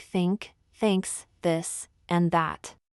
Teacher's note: it requires you to place your tongue between your teeth and blow air out gently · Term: th sound